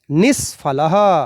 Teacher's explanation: या नियम में हमारे था कि फ विसर्ग के बाद में आ रहा हो तो विसर्ग जो है वो मूर्धन्य स में परिवर्तित हो जाएगा, रूप बनेगा निष्फलः।